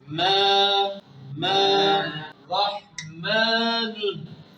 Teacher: Yani yanında med harfi varmış gibi üstünlük bir şekilde harfi uzatır. Asar yani mesela rahmanün mim üzerinde asar var. yanında med harfi varmış gibi uzatarak okuyoruz.